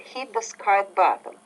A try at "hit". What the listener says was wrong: Hit, not heat. Hit, hit. Hit, heat, heat, hit, heat.